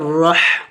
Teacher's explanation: را موٹے حروف میں سے ہے اور ح حروف حلقے میں سے ہے، وسط حلق سے ادا ہوگا